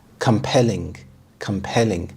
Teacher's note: The stress is on the second syllable, compelling.